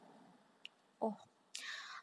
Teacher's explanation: Antara oh pertama dan oh kedua biasanya menghasilkan glota berhenti